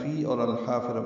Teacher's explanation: لام ساکن پہ اظہار ہے، فی اور الحافرہ ملا دیا گیا. لام ساکن پہ اظہار قمری، حا الف مدہ وسط حلق سے ادا ہوگا، را پر پڑھیں گے اور تاء مربوطہ پہ وقف ہو جائے گا، ہا میں تبدیل ہو جائے گی.